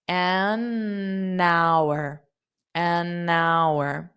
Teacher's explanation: So notice the word hour, the H is not pronounced.